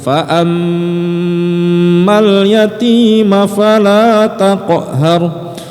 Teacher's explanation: Itu namanya gunnah musyaddadah atau syiddah. Kalau syiddah itu mim di atasnya ada tasydid, maka dia digunnahkan dulu, didengungkan dulu, ditahan dulu.